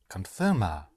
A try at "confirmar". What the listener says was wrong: You have to hit the ending. Right, confirmar. Which means that with all verbs in Spanish, the infinitive, meaning the whole verb, in English, you use to confirm, to eat, to know, to see.